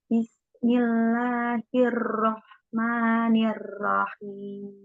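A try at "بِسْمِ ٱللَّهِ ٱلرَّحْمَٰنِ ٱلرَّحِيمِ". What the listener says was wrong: Nah, tapi tadi di huruf ro coba tadi ro-nya tadi kan Ibu bacanya r, tuh ada getarannya Bu ya. Coba kita agak samarkan apa ya? Kalau volumenya itu dikecilkan itu, Mbak. Nah, jadi Bismillahirrahmanirrahim.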